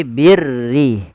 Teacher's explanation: huruf ra yang dibaca dengan tipis, yaitu ra tarqiq, yang dimana huruf ra-nya berharakat dengan berharakat kasrah.